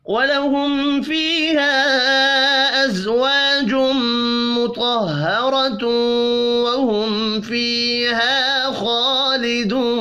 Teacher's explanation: میم ساکن کے بعد فا ہے، اظہار شفی ہوگا، غنہ نہیں ہوگا. فیہا یا مدہ کو ایک الف کے برابر کھینچ کر پڑھیں گے.